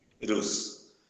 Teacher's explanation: a sílaba mais forte é a penúltima, porque a última é rus, a penúltima é vi. Então, é a sílaba mais forte, por isso que ela é acentuada. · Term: paroxítona